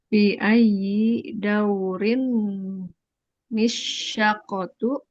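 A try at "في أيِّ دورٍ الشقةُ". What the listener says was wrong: Nah, fi ayyi dauri nisyaqqatu karena huruf ro-nya bertanwin. Karena huruf ro-nya bertanwin dan bertemu dengan alif lam yang harokatnya juga sukun, jadi tanwin dan sukun ini tidak bisa dibaca.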